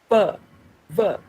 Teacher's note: you put your upper teeth on your lower lip